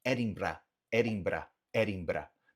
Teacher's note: E fato curioso, na Escócia eles não têm esse R gutural que é norte-americano, que é o bra, bra, bra. Eles vão fazer o R, que seria o R alveolar, que seria muito parecido ao R que a gente tem na língua portuguesa mesmo, que é aqui atrás dos dentes, né?